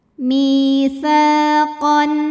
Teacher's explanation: Sa matobi'i zahiri, karena ada alif yang didahului baris fathah, maka huruf sa panjang 2 harokat.